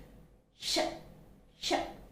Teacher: it's sh, which is again a voiceless consonant, voiceless palato-alveolar consonant. Sh, sh. See how the voice is coming out, the breath is coming out without much obstruction. · The air is coming out of our mouth with audible friction. Okay, that's why it's called a fricative.